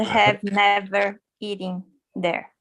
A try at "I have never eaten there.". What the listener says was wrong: Just one more thing. It sounds like you're saying eating. I'm hearing ing, eaten, eaten. eaten or you can say eaten. Eaten, kind of like that.